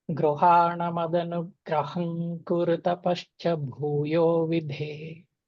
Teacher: గ్రహం తర్వాత గ్రహం కురు అంటే గ్రహం పెదాలు ముయ్యకుండా చెప్తాం